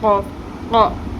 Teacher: جب زبان کی جڑ اوپر نرم تالو کے ساتھ لگتی ہے تو قوف ادا ہوتا ہے